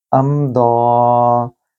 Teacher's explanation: मीम साकिन के बाद दौद का हर्फ है जो कि 27 हरूफ में से है, लिहाजा यहाँ आपने गुन्ना नहीं करना।